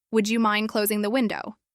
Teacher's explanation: The soft rise at the start and the fall at the end create a feeling of ease.